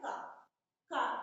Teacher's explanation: हम इसे स्पर्श व्यंजन इसलिए कहते हैं कि ये हमें उच्चारित करते समय कोई भी वर्ण हम उच्चारित करेंगे, जैसे हम बोल रहे हैं का, तो ये हमारे कंठ से उच्चारित हो रहा है, हमारे कंठ को स्पर्श करते हुए बाहर निकल रहा है, इसलिए हम इसे स्पर्श व्यंजन कहते हैं।